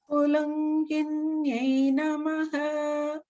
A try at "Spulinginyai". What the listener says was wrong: It just sounded a little bit like lunginye, whereas it's linginye. Spulinginyye.